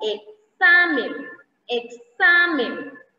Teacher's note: Cuando esta X está entre vocales, la pronunciación de la X es una secuencia de los fonemas K más S.